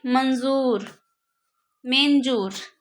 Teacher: स्वर के बाद आने वाला जो व्यंजन है उसका ध्वनि नाक से निकलता है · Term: अनुस्वार